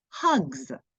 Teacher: why isn't it a z because G is voiced so suffix s has to be voiced as well